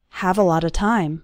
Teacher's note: All of those little words, a lot of, run together into a lotta, so it sounds like this, have a lot of time.